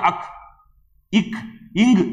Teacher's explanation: மெய்யெழுத்துக்கள் இதெல்லாம் அரை மாத்திரை தான் அந்த ஒரு ஒரு மாத்திரையிலயும் பாதி அளவுதான்